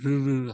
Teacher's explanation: 만들었는데 여기다 핵을 더 붙여 놓으면 불러가는 소리가 돼 혀가 굴러가는 소리 모양이에요